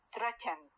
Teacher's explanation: For example when I say threaten مثلا or threatening, we find much more commonly a syllabic n